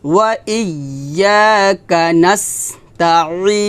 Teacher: আইনটা চাপ দিয়ে বলতে হবে গলার মাঝখান থেকে